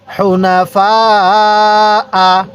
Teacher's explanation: এই ফায়ের মধ্যে আমরা 4 আলিফ টান দিব।